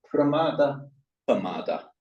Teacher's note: And in Pali, as you would expect, when you at the beginning, you've got the consonant cluster, one of them's gotta go, so the r goes